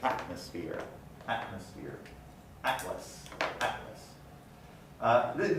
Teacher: We see in fluent speech glottal stop substitution for alveolar stops. And it takes place when the consonant t is before another consonant.